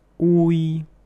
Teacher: so you can hear that in this word the u sound is very long but the 'i' sound is very short